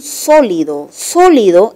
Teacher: el acento está en la antepenúltima sílaba